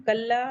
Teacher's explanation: कल्ला लाम मुशद्दद है, अलिफ मद्दा है, 2 काउंट